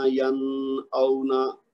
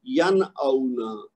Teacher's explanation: بالکل ظاہر کر دینا نون کی آواز کو · نون ساکن کا ہم نے اظہار کرنا ہے، اس کا غنہ نہیں ہونے دینا